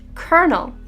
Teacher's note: pronounced kernel with the l becoming an r sound fun fact this word actually underwent a respelling even after pronunciation